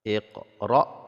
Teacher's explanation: qf sukunnya tidak terlalu besar tapi hanya sedikit saja karena Qalqalah sugro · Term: qalqalah sughra